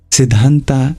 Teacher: The dh is a dental sound, aspirated, maybe difficult for you.